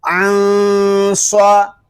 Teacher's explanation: صاد زبر صا عن صا، یہاں نون ساکن میں اخفا ہوگا، یہاں غنہ کریں گے